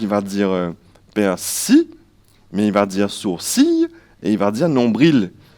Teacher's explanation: des gens qui ne prononcent pas le L final, d'autres qui vont le prononcer le, et certains qui vont même le prononcer ye